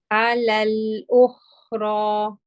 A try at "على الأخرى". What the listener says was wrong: Yes, your ra is good. I just feel like you're not circling the lips properly, but you're almost, your lips are not relaxed, right? They are a little bit coming together.